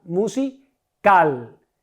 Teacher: ¿Cuál es mi sílaba tónica? La última. Cal. Musical. Es una palabra aguda.